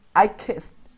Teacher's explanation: when we pronounce the T at the end, the T doesn't vibrate, no vibra. But in this case, and in this case, our vocal cords, nuestras cuerdas vocales, sí vibran.